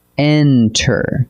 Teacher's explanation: Enter, with the beat on the first syllable, not the last.